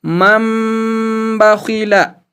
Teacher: इसी तरह मन और बखिला 2 कलमे हैं और यहाँ भी अगर हम गौर से देखें तो इस नून साकिन के बाद बा मुतहर्रिक यानी ज़बर वाला बा आता है, इसलिए इस नून साकिन में जो नून की आवाज़ है उसको मीम की आवाज़ से बदलकर गुन्ना और इख्फा के साथ पढ़ेंगे। जैसे मम बखीला, यानी मन बखीला लिखा था लेकिन पढ़ना है मम बखीला। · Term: इकलाब